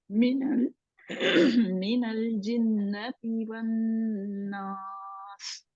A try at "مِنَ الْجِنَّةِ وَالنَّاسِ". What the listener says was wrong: نون کو موٹا نہیں کرنا, ون ناس. اچھا, ایک نون کے اوپر تو ہماری شاد ہو رہی ہے, تو دوسرے نون کے اوپر نہیں ہو رہی. دو دوسرے پہ بھی شاد ہے, تو ایک کے اوپر آپ نے گناہ کیا اچھی طرح, دوسرے کا حق ہی نہیں ادا. پہلا جنہ والا جو ہے اس حق ہی نہیں ادا کیا نا.